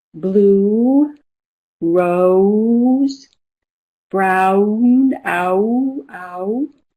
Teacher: I it's moving towards the Y. And then we have other vowels that moves towards W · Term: moving vowels